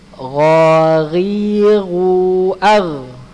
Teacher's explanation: Huruf ghain ini tenggorokan atas ya